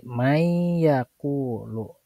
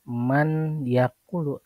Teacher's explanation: Huruf nunnya harus dileburkan dan dimasukkan ke dalam huruf ya. Tadi may yakulu, nunnya tidak dibaca man yakulu tapi may yakulu. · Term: idgham bigunah